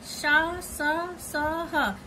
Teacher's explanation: इनका उच्चारण रगड़ घर्षण से उत्पन्न होता है, मतलब उच्चारण जब करते हैं रगड़ आता है, ऊष्म वायु से होता है, इसलिए इन्हें ऊष्म व्यंजन कहा जाता है।